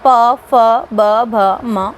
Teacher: फिर बात आती है ओष्ठ्य की। तो जिनका उच्चारण दोनों होठों से हो ऐसी ध्वनियाँ ओष्ठ्य कहलाती हैं।